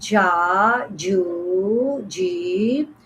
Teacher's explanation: Jim alif zabar ja, jim ya wow pe ju, jim ya zer ji. This jim pronounced from the middle part of the tongue and touching the middle part of the palate